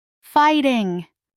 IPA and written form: ˈfaɪtɪŋ (FIGHTING)